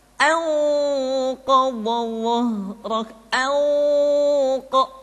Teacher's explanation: Ketika nun mati tanwin bertemu dengan 5 huruf tadi, maka harus terdengar suara gunnah yang menebal atau disebut dengan tafkhimul gunnah. Contoh, nun mati ketemu dengan qaf, anqadha, tidak dibaca anqadha, tidak anqa, tapi anqadha, anqa.